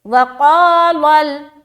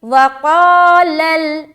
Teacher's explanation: لام میں جیسے آپ پہنچیں گے آپ کی آواز باریک ہو جانی چاہیے، لام کو موٹا نہیں کرنا